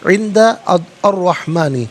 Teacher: عند میں نون ساکن ہے، اس کے بعد دال حرف اخفا ہے تو نون ساکن کو اخفا کے ساتھ پڑھیں گے، اخفا کہتے ہیں ناک میں آواز لے جا کر گنگنانا